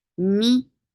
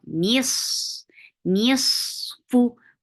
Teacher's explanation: Keep noon light and sod heavy because we tend to make any letter which is beside a heavy letter, we tend to make it heavy too, even though they are light.